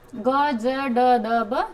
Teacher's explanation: घोष में जिसमें आपको भारी कंपन होता है बोलते समय, है ना, वाइब्रेट होगा, तो वो तीसरा, चौथा, 5वां है।